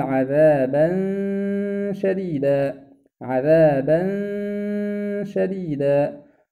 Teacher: هنا نلاحظ أن التنوين وقع بعده حرف الشين، وهنا إخفاء، وهذا الإخفاء معه غنة